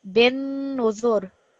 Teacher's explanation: So what you're going to remember here is that it's going to have extra emphasis because of the shadda, and also because it's a noon mushaddad, it's going to have a slight nasal sound.